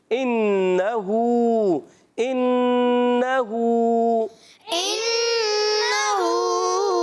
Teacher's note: नून मुश दद है एक अलिफ का गुन्ना करेंगे